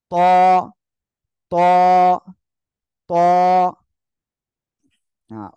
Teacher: এক আলিফ টেনে পড়বো আওয়াজটা কি হবে মোটা আওয়াজ হবে